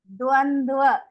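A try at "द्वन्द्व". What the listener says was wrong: Don't use the upper lip. In the first va, you are using va. No. Dvandva. Dvandva. In Sanskrit, there is only one va. In English, there are two va, like va and va, like one. It is with both the lips.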